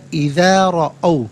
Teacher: रॉ पर ज़बर है, रॉ को पुर करके पढ़ा जाएगा